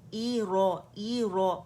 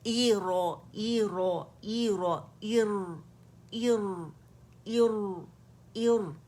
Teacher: لیکن را سکون سے پہلے جب حمزۃ الوصل آئے گی اسے ہم زیر سے یعنی کسرہ سے اٹھائیں گے تو را موٹی پڑی جائے گی